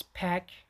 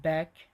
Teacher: P is a voiceless sound and B is a voice sound.